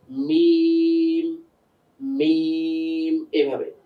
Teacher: বাটা হয় ঠোঁটের ভিজা অংশ থেকে, মিমটা হচ্ছে একটু বাইরে ঠোঁটের শুকনো অংশ থেকে